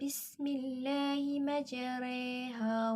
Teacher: Mencodongkan bacaan alif seperti huruf mad sehingga berbunyi seakan-akan dekat dengan huruf ya atau di antara baris atas dan baris bawah. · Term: imalah